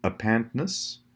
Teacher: ness always pretty much has that schwa sound.